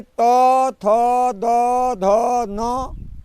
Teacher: जीवा जो है आपकी सीधे जो है दांत को जाकर के स्पर्श करती है।